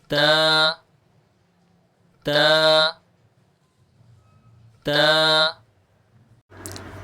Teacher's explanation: زبان کی نوک کو سامنے والے اوپر کے دو دانتوں کی جڑ سے لگا کر باریک آواز سے پڑھیں گے۔